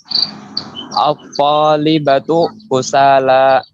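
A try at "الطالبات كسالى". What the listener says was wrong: Nah, banyak panjang at-talibatu.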